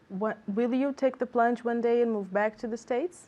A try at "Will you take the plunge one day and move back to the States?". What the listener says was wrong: Okay, good, but do you hear intonation? Because I didn't hear any intonation. Do we want intonation? We want intonation, right? give me some intonation.